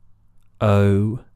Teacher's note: the vowel changes. It's a diphthong, it's called.